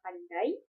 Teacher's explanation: kombinasi dua vokal dalam satu ketukan seperti ai pada kata pandai menghasilkan suara yang menyatu dan membentuk suara kesatuan bunyi. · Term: Diftong